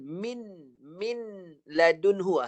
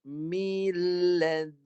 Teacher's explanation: Dengar bunyi mil. Jadi jangan baca nun.